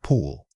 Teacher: a short, quick back vowel sound. Your lips should be slightly rounded and relaxed, not spread wide. Think of the effortlessness needed to quickly pull something towards you.